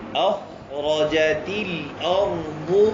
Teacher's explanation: اور ارض میں را کو کیسے پڑھیں گے؟ موٹا پڑھیں گے.